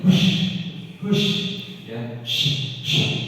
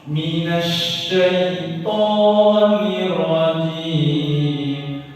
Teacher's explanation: Sinnya ini ada angin itu tersebar di dalam rongga mulut kita. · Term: Shin